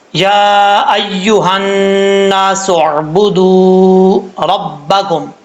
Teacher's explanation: یا کے اوپر کھڑا زبر ہے اور مد ہے، اس مد کو مد منفصل کہا جاتا ہے، 2.5 الف کے برابر اس کو لمبا کیا جائے گا۔ اور بعض اوقات لوگ پڑھتے ہیں یا ایھا الناس، ایسا نہیں پڑھنا، مد کی مقدار پوری کرنی ہے۔